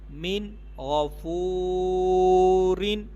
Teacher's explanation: نون ساکن کے بعد غین، غنہ نہیں کریں گے